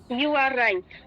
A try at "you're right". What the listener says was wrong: No, it's not you are, it's your.